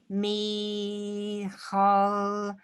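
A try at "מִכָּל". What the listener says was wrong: Kol. Not a ch. Kol.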